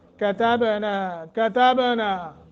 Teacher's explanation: وَلَقَدْ كَتَبْنَا، وَلَقَدْ، قاف کو موٹا اور دال پہ قلقلہ ہے، کتبنا، کتبنا، با ساکن ہے، قلقلہ کر کے پڑھیں گے